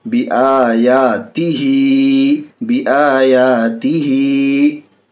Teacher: हा खड़ी ज़ेर ही, हा के नीचे खड़ी ज़ेर है, खड़ी ज़ेर बराबर है अलिफ हर्फ मद्दा के। खड़ी ज़ेर को थोड़ा खींच कर पढ़ेंगे।